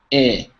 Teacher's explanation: So your tongue is going to be closer to the middle than the front.